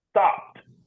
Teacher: the F the F the CH the s h the k the e d is pronounced with the T